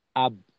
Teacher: আমি আটকাইলাম ঠোঁটে গিয়ে আটকাইলাম। তার মানে ঠোঁট, ঠোঁট হইলো বায়ের মাখরাজ।